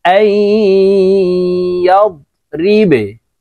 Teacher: এই যে নুন সাকিনের পরে ইদগামে বাগুন্নার চার হরফের এক হরফ আসছে দেখুন, ইয়া। তাই আমরা এই নুন সাকিনের পরে ইয়া আসার কারণে গুন্নার সহিত মিলে ইয়া পড়ব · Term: ইদগামে বাগুন্নাহ